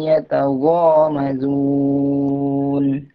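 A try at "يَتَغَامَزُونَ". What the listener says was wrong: Jelaskan zanya. Yataghamazu za.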